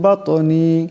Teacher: লাকা মা ফি বাতনি, বাত তোয়া সাকিন, তোয়া কলকলার হরফ, আওয়াজে টক্কর খাবে